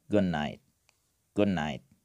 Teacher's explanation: it will become “goon night” good night like “d” becomes “n”